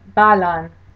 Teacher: in the word Balan the first syllable gets the stress